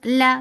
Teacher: La for fatha open jaws, the sound is short.